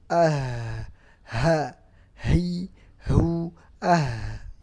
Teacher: Sifat yang kedua rakhawah, karena juga ada suara yang keluar.